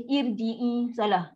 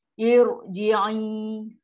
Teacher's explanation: Bila hamzah wasal selepas di huruf ra, automatik ra ni ra tebal. Yang tafkim irji'i.